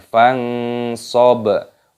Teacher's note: Nun sukun bertemu dengan huruf shad, hukumnya dibaca ikhfa. Cara membacanya disamarkan.